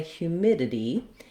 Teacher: both of these sounds the d and the t in this word are produced as a flap